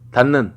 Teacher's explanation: 디귿은 비음 앞에서 니은으로 발음됨. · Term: 비음화